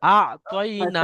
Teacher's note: নুনের উপরে খালাস জাবার আছে, খালাস জাবার আলিফ মাদ্দার সমতুল্য, টান দেন